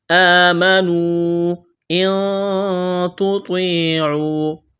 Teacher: آمنوا ان تطیعوا، اخفا کریں گے، نون ساکن کے بعد تا ہے